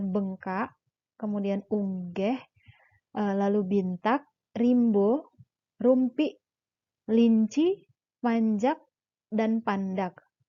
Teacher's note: Deret konsonan dalam bahasa Ulu kebanyakan konsonan pertamanya adalah nasal, seperti kata bengkak, kemudian unggeh, lalu bintak, rimbo, rumpi, linci, panjak, dan pandak.